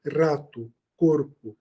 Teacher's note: nunca vai ser o r como o r caipira nosso que a gente diz R retroflexo